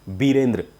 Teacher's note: पश्चिम बंगाल में जितने भी नाम हैं उनमें व होता ही नहीं है, वहाँ ब का उच्चारण होता है